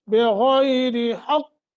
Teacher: غین کو موٹا اور تھوڑا سا نرمی کے ساتھ لمبا کر کے 1 سیکنڈ کی مد کر کے پڑھیں گے ، بغیر حق، کیونکہ غین موٹا بھی ہے اور پھر یہ